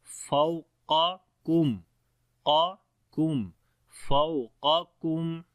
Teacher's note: So make sure to read separate sound on the both qaf. The first qaf is heavy and the second kaf is light.